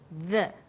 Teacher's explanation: when you say the, your tongue is between your top and bottom teeth, like this, the.